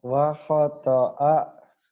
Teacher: Wa khata'a nggak ada yang panjang, Mas.